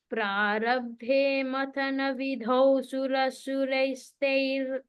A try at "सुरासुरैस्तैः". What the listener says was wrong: Give a time on sura, aki matra longer, then you will get it.